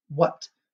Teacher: except in this word what we don't pronounce the h